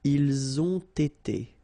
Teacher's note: You get first the liaison z, and then you get the t.